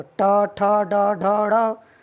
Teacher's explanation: हमारी जो जीभ है तालु को स्पर्श कर रही है, हल्की सी मुड़ रही है, यानी मुड़ रही है मूर्धा।